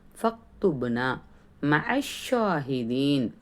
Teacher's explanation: ஃபக்துபுனா, பாவில் சுக்கூன் வந்திருக்கு, பாவில் பா சுக்கூன் பெறும்போது கல்கலாவுடைய சட்டம், அந்த இடத்துல அசைச்சு ஓதணும். நூனில் அலிஃப் மத் இருக்குது, 2 ஹரக்கத் நீட்டணும். · ஷீனில் தஸ்தீத் இருக்குது, அழுத்தம் கொடுக்கணும். மேலே கடா மத் இருக்கிறதுனால 2 ஹரக்கத் நீட்டணும்.